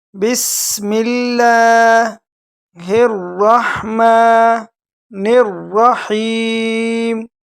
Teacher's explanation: سین میں سٹی کی آواز نکالیں گے اور لفظ اللہ جو ہے اس کو باریک پڑھیں گے، کیونکہ لفظ اللہ سے پہلے یہ زیر آیا ہوا ہے، زیر حرکت زیر ہے، تو اس لیے اس کو لفظ اللہ کو کیا پڑھیں گے؟